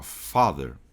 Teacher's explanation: Porque a palavra father, automaticamente você vai prolongar levemente esse A do father aqui